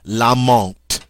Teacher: Notice also that the TH is pronounced like a T.